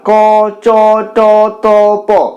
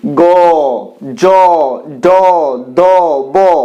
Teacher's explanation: উচ্চারণের সময় কণ্ঠস্থ স্বরতন্ত্রী ভীষণ ভাবে কম্পিত হয় এবং এগুলো অনেকটা গম্ভীর শোনায় তাই এই ধরনের বর্ণগুলোকে বলা হয় ঘোষ বর্ণ গ ঝ ঝ · গম্ভীর হয়ে যাচ্ছে তো এটাই অঘোষ এবং ঘোষের মধ্যে পার্থক্য অর্থাৎ অঘোষ হলে কণ্ঠস্বর মৃদু থাকবে আর ঘোষ হলে কণ্ঠস্বর গম্ভীর হয়ে যাবে